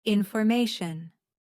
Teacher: Information stress is on the third syllable.